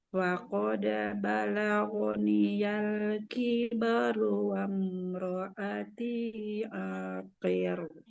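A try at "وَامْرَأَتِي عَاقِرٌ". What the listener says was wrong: Jangan aqir. Masih tebal. Akhir. Tipiskan huruf ro-nya. Akhir.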